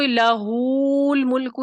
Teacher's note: لہ الملکو کھینچے بغیر، یعنی عدم صلہ کے ساتھ پڑھیں گے